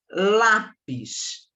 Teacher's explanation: a minha sílaba tônica é o Lá. É acentuado porque termina com IS.